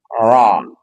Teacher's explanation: Ujung lidah bertemu dengan gusi dua gigi seri atas. R. Dan dia punya sifat takrir, getaran.